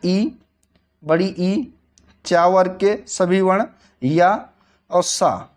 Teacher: जिन वर्णों का उच्चारण जीभ तथा तालु के स्पर्श से होता है उन्हें तालव्य कहा जाता है। ठीक है, जैसे ई, बड़ी ई, चा वर्ग के सभी वर्ण, या और सा, गोल वाली सा, इन सभी का उच्चारण स्थान जो कि चा यानी कि तालव्य से होता है।